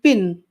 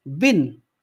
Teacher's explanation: When we change per sound into b, by the way, there is not much difference between p and b sound, because p and b sound are both bilabial, p and b sound are both plosive, but there is only one difference, that p sound is voiceless and b sound is voiced